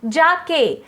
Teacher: और जिसका चिन्ह जो है वह गुरु वाला है, यानी एस। जाके, जा और के दोनों में भी उच्चारण के वक्त जोर पड़ता है, इसलिए यहाँ पे भी मात्रा लगी है, इसलिए यहाँ पे भी एस एस लिखा गया है। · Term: दीर्घ उच्चारण